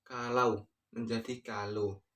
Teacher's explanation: perubahan dua bunyi vokal atau vokal rangkap tetap menjadi vokal tunggal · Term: monoftongisasi